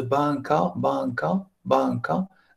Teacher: Quand on dit banca, banca, qu'est-ce qu'on a fait? Le ne et le ge fusionnés.